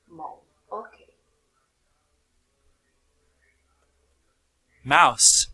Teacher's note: The upper lip articulates with the lower lip producing a complete contact. So, therefore, bilabial consonant.